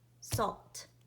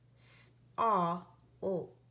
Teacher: in the word salt, I hear the sound ah next to the sound ol